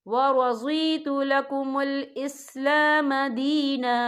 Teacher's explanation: وقف کی صورت میں ایک زبر پڑھا جائے گا، دو زبر نہیں پڑھے جائیں گے